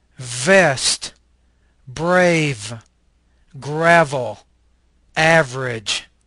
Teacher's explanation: this is a labial Dental fricative voice consonant